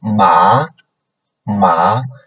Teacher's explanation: So for second tone, it's like a upcoming, right? It's a upcoming tone. So from a lower beginning, from a lower point to a higher point